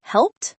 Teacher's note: t after voiceless sounds like helped